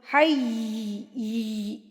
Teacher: حی یا کے اوپر تشدید، تو اس طرح رگڑ کھاتی ہوئی آواز ہوگی